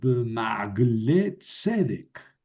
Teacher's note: le quita el acento a la palabra que está antes y se la deja a la última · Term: makef